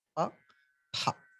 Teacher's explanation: for that pa, you're adding one ha, it becomes pha. That is mahaprana.